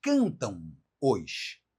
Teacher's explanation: Essa é uma forma que termina numa ideia nasal, né? Ela termina, na verdade, num ditongo nasal